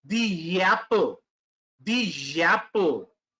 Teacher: Whenever we use a vowel sound and we use the with it, we place a Y between.